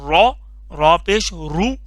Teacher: र के ऊपर जबर या पेश हो तब यह लफ्ज़ मोटा हो करके पढ़ते हैं पुर करके पढ़ते हैं र अगर इसके नीचे जेर आ जाए